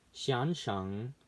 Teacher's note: So you're supposed to make it flat, like xian sheng, instead of up or down